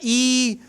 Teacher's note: जीभ का जो आगे का भाग है ये ऊपर की ओर उठ रहा है, ई, ठीक है ना, बड़ी ई, ऊ, तो क्या हो रहा है, ऊंचाई पे उठ रहा है। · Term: संवृत स्वर